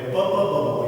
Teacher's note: ಎರಡು ತುಟಿಗಳು ತಾಗಿ ಉಚ್ಚರಿಸುವಂಥ ಧ್ವನಿಗಳು